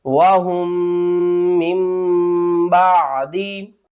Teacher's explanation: یہاں پر ہو رہا ہے اخفاء شفوی، یعنی کہ اس میم کو ہم چھوڑ رہے ہیں، ہا کو دوسری میم کے ساتھ ملا رہے ہیں اور غنہ بھی کریں گے